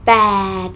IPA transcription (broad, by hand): pàed